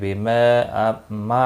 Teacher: ما الف مدہ ہے، ایک الف کے برابر کھینچ کر پڑھیں گے